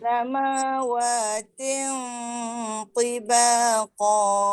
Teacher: Samawatin tebal pangkal lidah naik.